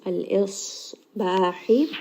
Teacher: sad is going to be heavy, and then sad also has the quality of safir, meaning that there is going to be a little bit of whistling